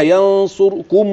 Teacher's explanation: حضرتك بتقوليها ينصركم و فيها كده جزء من الضمه بسيط ده غير صحيح الراء لابد يكون سكونها خالص والسكون في الراء هنا خالص للكل